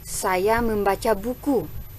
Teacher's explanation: Tekanan yang ada pada kalimat di sini terletak pada kata buku.